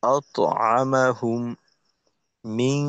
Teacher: গুণ আছে, মিম সাকিনের ঈদগাম